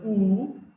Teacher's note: we've got a closed back vowel